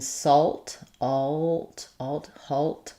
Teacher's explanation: And they don't follow spelling conventions in that in salt, alt, halt. I actually do say the L in these words versus walk.